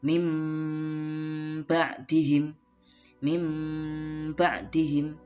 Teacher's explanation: Nah, suara nun mati berubah menjadi mim mati. Dan itu bacaan iklab disertai dengan dengung. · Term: iqlab